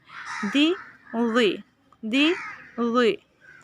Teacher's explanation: ذی میں زبان کی نوک جو ہے وہ ثنائے اولیہ کے کناروں سے لگے گی